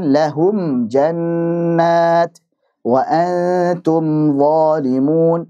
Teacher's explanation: Hanya saja aslul gunnah. Dia pokok gunnah saja, tidak dipanjangkan. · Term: izhar syafawi